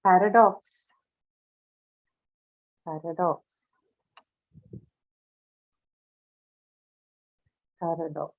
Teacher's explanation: should be on first syllable, right? So first syllable is stressed in this one, paradox.